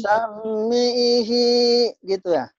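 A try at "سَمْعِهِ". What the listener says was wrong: Mimnya mati enggak? Sam'i. Sam'i. Sam'ihi.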